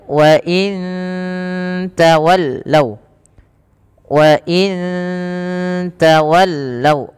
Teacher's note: nun mati bertemu tak lagi ada bacaan ikhfa hakiki, samarkan nunnya ke tak